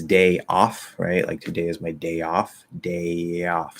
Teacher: as i pull out into ah it creates the illusion that there's a little bit of a y sound there and we might go just a little bit higher um but · so in that case we are going to link with a small y